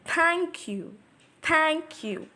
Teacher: Thank is a strong syllable and you is a weak syllable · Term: trochee